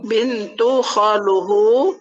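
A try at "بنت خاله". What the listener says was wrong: Maka diganti jadi bintu khalihi. Ya diganti menjadi kasroh. Bintu khalihi.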